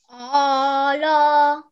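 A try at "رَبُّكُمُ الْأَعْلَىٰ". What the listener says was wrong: Okay, so it is going to be a'r. Alif and ayn sakin. A'r. A'la. Rabbukumul a'la. So, this one is not an alif mad.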